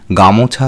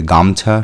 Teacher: শব্দের মধ্যবর্তী ও স্বরধ্বনিটি এখানে লোপ পেয়েছে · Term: মধ্যস্লোপ, মধ্য স্বরলোপ